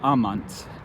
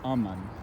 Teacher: They love in Latin is amant, A-M-A-N-T. In Spanish, I guess, out of laziness, that T drops out over time. So it's just aman.